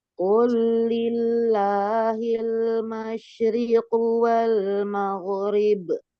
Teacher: Jadi huruf ginnya harus tebal dan mengalir suaranya.